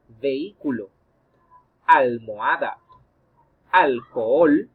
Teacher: la h es muda por lo tanto no impide la formación de diptongos · cuando veas que una h recuerda que la misma no tiene sonido propio así que debes asumir que ella no existe y observar si